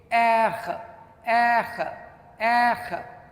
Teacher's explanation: R, how do you pronounce R in French? It is pronounced from the back of your throat.